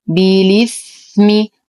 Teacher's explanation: أصل الكلمة بالإثم، لكن الإمام ورش يقوم بحذف الهمزة ونقل حركتها للساكن الصحيح قبلها وهو اللام، فتصبح مكسورة